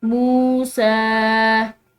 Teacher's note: सीन के ऊपर खड़ी जबर है, ठीक है, तो इसको हमने एक अलिफ की मिकदार जो है वो लंबा पढ़ना है